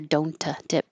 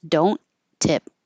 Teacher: Only one T, so you don't hear don't tip.